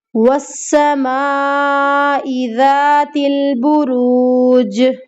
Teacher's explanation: آخر میں آیت ختم ہو رہی ہے اور جیم پر کلکلا ہوگا، تو ہمیں یہاں پر کلکلا بھی کرنا ہے۔